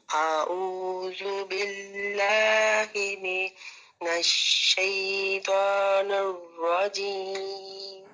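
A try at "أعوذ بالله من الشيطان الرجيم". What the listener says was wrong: نرجیم نہیں، نر، نون کے نیچے زیر ہے،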